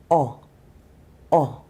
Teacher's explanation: O is a short vowel sound. I pull my tongue back in my mouth and I round my lips. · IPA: ɒ